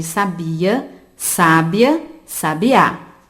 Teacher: Sabiá apresenta a última sílaba tônica, portanto, nós chamamos de palavra oxítona.